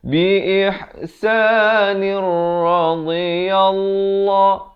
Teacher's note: Daripada biihsanin Jadi biihsanir, terus masuk ke dalam ra yang bersabdu ini tanpa dengung. Itulah yang dimaksudkan dengan idgham bila gunnah, masuk tanpa dengung.